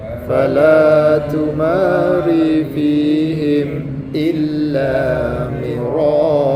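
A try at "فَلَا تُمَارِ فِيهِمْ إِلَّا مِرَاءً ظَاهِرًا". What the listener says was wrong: Keluar lidah. Keluar ke tidak? Lidahnya keluar.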